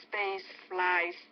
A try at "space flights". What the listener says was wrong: Space flight. Don't forget the T. Not space fly, but space flight.